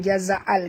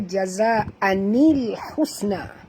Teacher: kena tambah nun kecil, ya, dekat antara an dengan alif lam ni.